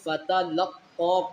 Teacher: فتلقى لام کو قاف کے ساتھ ملائیں گے، فتلقى قاف کھڑی مد زبر قا کو ہم 3 الفی کی مقدار کھینچ کر پڑھیں گے